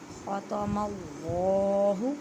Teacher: خا کو حلق کے اوپر والے حصے سے ادا کریں اور اللہ کے لفظ کو موٹا پڑھیں۔